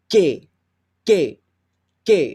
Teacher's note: So your mouth position when you say K is like, the back of your tongue is touching your upper molar teeth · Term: outward K snare